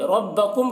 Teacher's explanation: ربکم کے میم میں یہاں پر اخفاء شفوی ہو رہا ہے، اخفا کے ساتھ پڑھیں گے